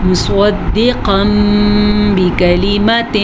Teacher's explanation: تنوین کے بعد ہمارے پاس با ہے جو کہ حرف اقلاب ہے, تو نون ساکن یا تنوین کے بعد با آ جائے تو نون ساکن کو یا نون تنوین کو اس چھوٹے سے میم میں بدل دیتے ہیں, تو یہ دو زبر کے بجائے میم پڑھا جائے گا